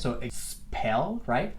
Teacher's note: Acuérdense de esa P, que es una consonante bastante más explosiva en inglés.